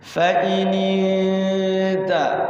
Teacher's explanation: nun sukun bertemu ta, namanya ikhfa, samar ya, samar. Jadi dengungnya itu tidak ang, tidak an.